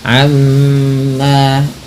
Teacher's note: Amma gunnah, tahan bunyi mimnya sebagaimana nun berharokat tasydid